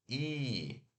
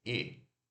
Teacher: o I longo a gente faz I, no inglês a gente segura mais, é longo, é I. Agora esse I curto a gente faz rápido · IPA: /i/, /ɪ/